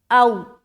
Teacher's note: واو ساکن سے پہلے زبر ہے تو واو لین نرمی کے ساتھ ادا کریں گے